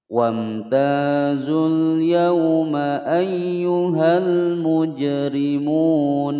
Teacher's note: huruf Jim berharakat sukun asli dan berada di tengah-tengah kalimat dipantulkan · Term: Qolqolah Sugro